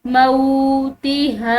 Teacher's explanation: واو ساکن ہے، یہاں پر ہم نے اس کو ایک الف کی مقدار کھینچ کر پڑھنا ہے